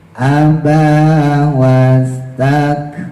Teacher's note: Nah ini tadi ya abanya panjang wastakbar. barnya itu kita tebalin dibaca tafhim rnya karena jatuh setelah harakat fathah. Nah, jangan sampai ro yang tebal tadi ngebawa ba jadi ikut tebal.